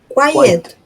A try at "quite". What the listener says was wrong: Cuidado con esa palabrita. Porque una cosa es quite modificador, quite, y otra cosa es quiet de silencio. Cambia dónde está la T, sí, en la palabra.